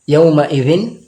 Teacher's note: নুনে ইখফা হবে না কারণ তানউইনের পরে আইন আছে